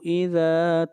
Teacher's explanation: ذا کو لمبا کریں گے ایک الف کے برابر، مد اصلی ہے